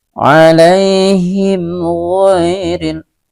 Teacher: ada mim sukun berjumpa dengan huruf ghin, gha, ya. Ini juga dinamakan dengan izhar syafawi. Cara bacanya tidak boleh didengungkan